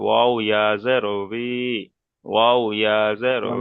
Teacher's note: যখন ওয়াওর নিচে যখন জের হয় তখন ওয়াওয়ের আওয়াজটা হয় হালকা বি, ভি মতো উচ্চারণ হয়